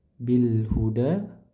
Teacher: lam takrif di sini dibaca. Kenapa? Karena bertemu dengan huruf ha. Makanya dibaca jelas ya. · Nah, di sini hamzah wasal tidak dibaca karena di tengah bacaan. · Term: izhar qamari